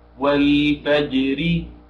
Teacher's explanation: تسقط همزة الوصل وسط الكلام